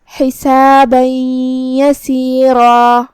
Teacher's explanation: کا معنی ہے حرف کو حرف میں داخل کرنا، تو ہم یہ تنوین کو یا میں داخل کر کے غنہ اور تشدید کے ساتھ یہ حکم کو ادا کریں گے